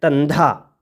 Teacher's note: ਇਸ ਕਰਕੇ ਧਿਆਨ ਰੱਖਣਾ, ਬਹੁਤ ਸਾਰੇ ਸੱਜਣ ਪਾਵਨ ਗੁਰਬਾਣੀ ਦਾ ਉਚਾਰਨ ਕਰਦੇ ਸਮੇਂ ਇਹਨੂੰ ਧੰਦਾ ਪੜ੍ਹ ਜਾਂਦੇ ਨੇ, ਉਹ ਫਿਰ ਦੱਦੇ ਦੇ ਨਾਲ ਉਚਾਰਨ ਕਰਦੇ ਨੇ। ਇਸ ਕਰਕੇ ਇਹ ਦੱਦੇ ਦੇ ਨਾਲ ਉਚਾਰਨ ਨਹੀਂ ਕਰਨਾ, ਇਹ ਧੱਦੇ ਦੀ ਗੌਣ ਧੁਨੀ ਦੇ ਨਾਲ ਇਹਦਾ ਉਚਾਰਨ ਹੋਣਾ